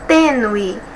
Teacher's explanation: nós temos duas sílabas e a penúltima é a mais forte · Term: paroxítona